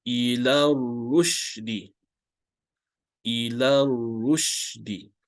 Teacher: this letter alif maksura, hamzatul wasl, and the lam need not be read. Okay, you can just choose to skip these 3 letters while you are reciting, so it becomes ila rushdi, ila rushdi.